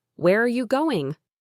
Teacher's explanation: Voice falls at the end.